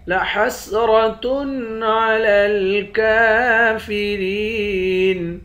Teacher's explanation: کاف پر کھڑا زبر ہے، ایک الف کے مقدار کھینچ کر پڑھیں گے۔